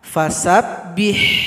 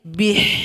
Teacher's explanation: kemudian di sini jangan sampai dibaca fasabbiah karena di sini Ba kasr berjumpa dengan ha fasabbih ada bunyi angin